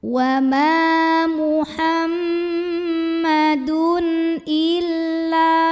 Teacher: tanwinnya ini dibunyikan dengan izhar, bunyi n-nya jelas. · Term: izhar halqi